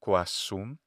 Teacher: most Latin speakers would probably end up saying something like quasum, and they'd maybe just geminate the S, like the mescentius example.